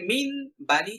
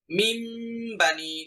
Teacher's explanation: এখানে মিন বানি ছিল, আমি এখন বলবো মিম বানি। সরাসরি দুই ঠোঁট লেগে যাবে, কারণ মিম উচ্চারণ করতে গেলে দুই ঠোঁট লেগে যায়। মিম বানি, সরাসরি মিম উচ্চারণ শোনা যেতে হবে। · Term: ইকলাব